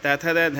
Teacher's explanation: त वर्ग वाले दंत से बोले जाते हैं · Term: दंत व्यंजन